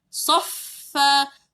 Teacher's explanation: Kalau sabdu mesti kena tahan. Jadi fa tu kita tahan. Soffa. Makhraj dia lidah gigi atas sentuh bibir bawah.